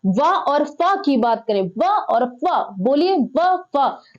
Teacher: ऊपर वाले दांत नीचे वाले होठों को स्पर्श करते हैं, ये दंतोष्ठ ध्वनियां है।